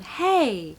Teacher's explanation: it's sometimes a slide down